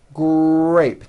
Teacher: It is important to understand that the R sound is the strongest sound of the blend, and your lips often come forward before you even say the word. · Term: R blends